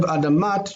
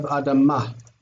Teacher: The tav ending dropped off. Okay, and it became a hey.